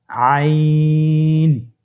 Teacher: আইন হরফটি উচ্চারণের সময় অবশ্যই তিন আলিফ টেনে পড়তে হবে · আইন হরফটি কণ্ঠনালীর মধ্যখান থেকে উচ্চারিত হয়।